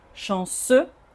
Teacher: Et de toute façon, le X1, on ne le prononce jamais à cette consonne à la fin est muette